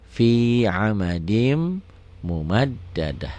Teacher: Oh, karena ini tanya ta marbutoh, tidak bunyi t kalau dihentikan, kalau dimatikan. Kalau disukunkan bunyinya jadi ha.